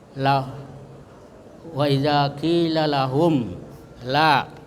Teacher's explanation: jadi dibaca jelas itu mimnya dengan tertutup ya, dengan tertutup mulutnya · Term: izhar syafawi